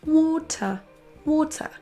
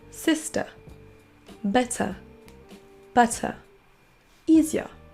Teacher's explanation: On ne dira pas water en prononçant le R, mais water, water. On n'entend pas le R du tout dans l'accent britannique.